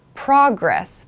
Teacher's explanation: progress as a noun takes progress the emphasis is on the first syllable